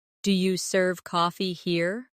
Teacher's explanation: In casual speech, do you becomes dia.